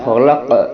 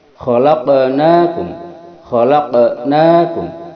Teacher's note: qaf yang terakhir memiliki sifat qalqalah, memantul. Ini kalau disukunkan akan jelas memantulnya.